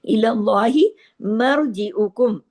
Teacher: اللہ کے نام میں جو لام ہے اس کو ہیوی کر کے پڑھیں گے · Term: لام جلالہ